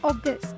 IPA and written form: ˈɔːgəst (August)